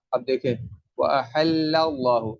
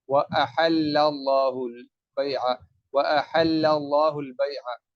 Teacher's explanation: اب لام کے اوپر زبر ہے تو اللہ کے لام کو پر کر کے پڑھوں گا کیونکہ اس کے فوراً بعد آ رہا ہے۔